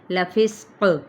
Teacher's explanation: اب یہاں پہ سین پہ سیٹی اور قاف پہ جب ہم نے وقف کیا تو ایک تو یاد یہ رکھنا ہے کہ کلکلا بھی ہوگا، قاف حروف مستعلیہ میں سے بھی ہے، موٹا ادا کرنا ہے، وقف کیا تو وقف بالاسکان.